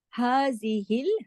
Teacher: ہا کی آواز سینے کی طرف جاتی ہے، کھڑی زبر ہے الف کے برابر